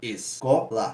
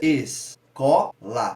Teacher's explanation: quando a gente faz a pronúncia escola, a gente vê que no có ele dá uma ascendência, ele sobe, então é um fonema mais intenso. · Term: sílaba tônica